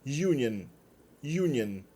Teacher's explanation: Palavras que começam com o som de Y, aquele I fraco que acaba subindo para uma vogal posterior